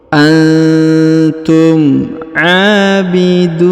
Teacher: huruf du dipanjangkan dua harakat karena di depannya terdapat wau sukun